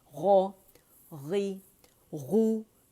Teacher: सिर्फ जबान की जड़ ऊपर जा रही है